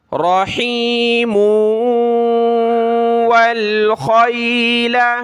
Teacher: واو کے اوپر جو تشدید ہے یہ اس صورت میں جب ہم ملا کر پڑھیں، اس آیت پر رکے نہیں، ملائیں تو میم کو واو کے ساتھ ملائیں گے، ناک میں آواز پیدا کر کے پڑھیں گے